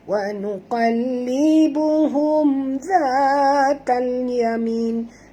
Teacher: mim mati bertemu zal, tak boleh dengung, izhar syafawi.